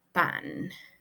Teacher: algo muy particular de ellos es la velarización de la nasal alveolar N, y por eso suena como que ahí bien pronunciada la palabra pan.